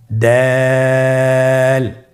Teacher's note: জিহ্বার আগা সামনের উপরের 2 দাঁতের গোড়ার সঙ্গে লাগিয়ে উচ্চারিত হয় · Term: দালের মাখরাজ